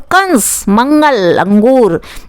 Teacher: इसमें उच्चारण जब होता है तो नाक से थोड़ी आवाज़ आती है, नाक से होता है। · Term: अनुस्वार